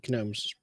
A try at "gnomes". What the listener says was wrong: They're not gnomes. They're just gnomes. The G's silent.